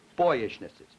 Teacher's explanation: of stress in other words to make this a real word I would have to have primary stress on boy and weak stress on the rest of it